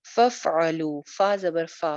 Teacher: फ़ा को ज़रा चलती हुई आवाज़ रहेगी।